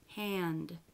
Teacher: You actually go directly from the n to the d without releasing it. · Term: not released